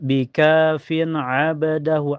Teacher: Bika fin abadahu, fin setelahnya ada hukum idhar halqi karena ada tanwin kasrah ketemu ain. Cara bacanya tanwin kasrahnya dibaca jelas ya karena ketemu huruf idhar